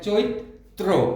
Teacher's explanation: এই চৈত্র বানানটির উচ্চারণ আমরা লিখছি, ঐকার থাকলে প্রথমে ওকার দিয়ে উচ্চারণ হবে, চো, তারপরে ই, আর যেহেতু শেষে রফলা আছে তয়ের সাথে, বাড়তি একটি ত আসবে, চৈত। তারপরে হবে তয়ে রফলা, উচ্চারণটি হবে চৈত্র।